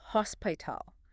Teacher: The crucial element here is the strong aspirated H at the very beginning. In some languages, the H is silent, but in English, you must push air up from your diaphragm and out of your throat.